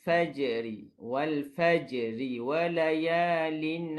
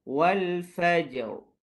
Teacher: Kalau kita sambung, ra tu nipis. Tapi kalau kita berhenti, wal fajr. Tebalkan dia.